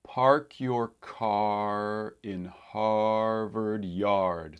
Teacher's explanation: There's a little bit of rounding that happens because of the R, because Americans have a tendency to round their lips slightly, at least, for an R sound, in addition to some other things that go on with R sounds.